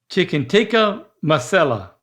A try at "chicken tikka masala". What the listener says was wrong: Masala. That's not right. It's all A's in the last one. The second syllable, you got to say it like you're relieved.